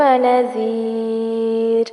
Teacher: فستعلمون کیف نذیر، نذیر ذال نرمی سے پڑھا جائے گا اور آخر میں را باریک ہوگا